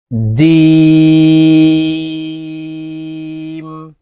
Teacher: জিম হরফ জিহ্বার মধ্যখান থেকে উচ্চারণ করতে হবে। জিম, 4 আলিফ টান দিয়ে জিম উচ্চারণ করতে হবে।